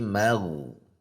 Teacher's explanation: Kalau ghainnya tidak ditekan pada pangkal lidahnya, maka akan berbunyi mag tipis. Sudah di titik ghain namun masih tipis.